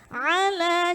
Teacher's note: Ala, jadi ainnya harus ada di tengah tenggorokan.